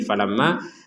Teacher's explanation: Ya intinya itu di rongga hidung bukan masalah lama berapa harakat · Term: dengung